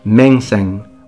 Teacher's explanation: the end were dropped and why were they both dropped because they sounded the same they were nasalized not fully pronounced